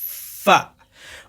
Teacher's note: دونوں سامنے کے دونوں دانتوں کو نیچے کے ہونٹ کا جو بیچ والا حصہ ہے اس میں لگانا ہے